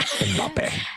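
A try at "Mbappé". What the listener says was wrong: Mbappe. The M is not silent.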